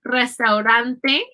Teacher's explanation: you'll notice that the first R is rolled and the second R is a flat R.